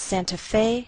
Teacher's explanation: We place the most stress on fe. That's our primary stress.